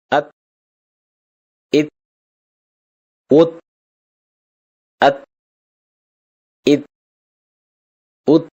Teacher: நாவின் நுனி மேல் வரிசை நடுப்பற்களின் ஈரைத் தொடும்போது ஒலிக்கப்பெறுகிறது